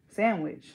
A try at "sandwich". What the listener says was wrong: Sandwich? Sandwich. Sandwich. Sandwich.